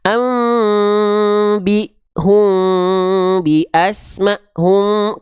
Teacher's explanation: dia dibaca sama kayak Ikhfa Syafawi bisa rapat bisa agak renggang ya